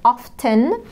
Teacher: طبعا the T in often صامتة.